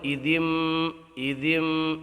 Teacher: یہاں ہم نون ساکن کو میم سے بدل دیں گے، ایدن نہ کرتے ہوئے ایدم ایدم اس طرح پڑھیں گے، ہم چینج کر دیں گے اس کو۔ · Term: اقلاب